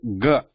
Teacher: when I say g, there is a sound of pure consonant, and there is a sound of a added to it